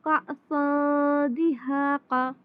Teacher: یہاں پہ تنوین کے بعد دال ہے یعنی کہ یہاں پر اخفا ہوگا